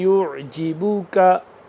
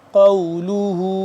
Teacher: یہ والا کاف باریک یہ والا قاف موٹا